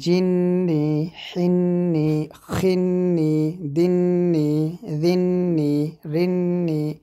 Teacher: নুনের উপরে তাসদিদ থাকলে সেখানে গুণনা করতে হবে এরকমভাবে।